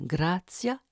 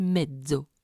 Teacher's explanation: Au niveau des alvéoles, la succession occlusion-frication donne les apico-alvéolaires ts et z de l'italien grazia et mezzo.